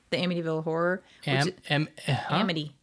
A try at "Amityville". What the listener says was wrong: Amityville. Yeah, you're saying it way too fast.